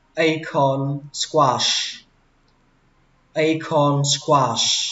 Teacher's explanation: Từ đầu tiên các bạn lên giọng âm đầu tiên A, xuống giọng con.